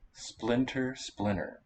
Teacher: the t goes away or is it that it's a tap and it's just a hard one to hear